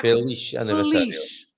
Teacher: The sound is not z, but the sound is sh, right? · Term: sh sound